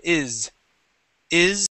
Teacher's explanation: when you have words like is, okay, you hear that vibration. It's very slight, but it's there. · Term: voiced S